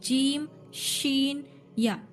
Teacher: और क्या है, 7वां मखरज बोले शजरी, उसमें आते हैं जीम शीन या, ठीक है। तो जो मिडिल जबान होती है वो ऊपर का हिस्सा, जीम ऊपर तारख को जाके टच होती है